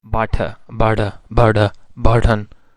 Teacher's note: in cockney accent glottal stop appears also between vowels in the words for example butter bird bird burden so they pronounce is like